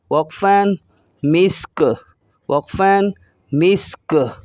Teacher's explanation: کاف کی دونوں پیشوں کو ظاہر نہیں کریں گے جب ہم رکیں گے